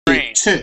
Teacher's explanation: It's almost like a CH, and we say tur. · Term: chur sound